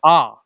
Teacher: जब बड़े आ को बोलते हैं तो मुख का आकार पूरा खुल जाता है, आ, इसमें मुख का आकार पूरा खुल जाता है, उसी को क्या कहते हैं, विव्रत स्वर कहते हैं।